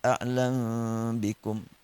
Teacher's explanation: Fatakhfa tanazzula, maka huruf mim tersembunyi bacaannya, sehingga dibacaannya a'lam bikum. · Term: ikhfa'ul mim indal ba